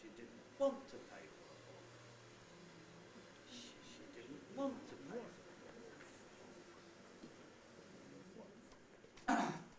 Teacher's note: If I haven't got an onset, I can't have a head. So she didn't want is a prehead, want is the nucleus, and to pay for the book is the tail. · I've only got one accented syllable this time, and that is the syllable want. So I haven't got an onset.